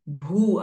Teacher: Again, Mahaprana, Dirgha sound with Visarga at the end of the sentence.